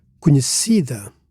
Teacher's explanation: this word carries the default stress on the penultimate syllable